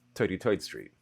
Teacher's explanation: And deeper still, turning th sounds into t.